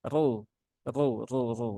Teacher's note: rnya dibaca dengan tebal R R R ya dengan menaikkan pangkal lidah ya naikkan pangkal lidah